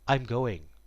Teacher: I'm going almost becomes one word I'm going because it's the verb to be I am and